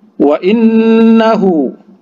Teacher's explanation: nun bertasydid, ya, didengungkan, digunah, ya. Itu guna musyaddah. Hu sama dengan yang tadi mad silah kusirah 2 harokat saja.